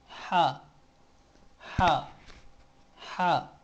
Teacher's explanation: हा किस तरह अदा होता है हलक के दरमिया हिस्सा से हलक के दरमियानी हिस्सा से हा अदा होता है · حلق کے درمیانی حصہ سے، حلق کے درمیانی حصہ سے ہا ادا ہوتا ہے